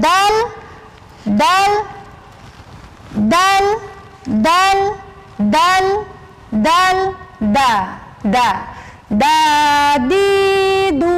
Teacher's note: Ujung lidah bertemu dengan pangkal gigi seri atas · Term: huruf dal